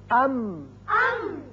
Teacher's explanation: ہونٹوں کا خشکی کا حصہ ملا تو میم ادا ہوا